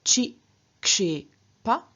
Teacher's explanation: So for example, of kship, to throw, we have a k and a sh at the beginning of the root, but it's only the k that gets reduplicated. K is a velar. Velars get reduplicated as palatals, and so k is reduplicated as ch, and so we get a first singular chi, kshe, pa, where chi is the reduplicative syllable, kshep is our root in guna, and a again is the ending for the first singular perfect active.